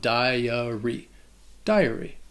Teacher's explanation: It's not 2. And the first syllable has that long I sound, that die, followed by the schwa, dahy-uh, and then the Y at the end has a long E sound, dahy-uh-ree.